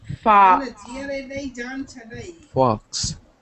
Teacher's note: It's more of an ah than an o.